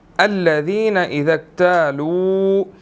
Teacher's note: لو کو ہم واو مدہ کی وجہ سے 1 سیکنڈ لمبا کریں گے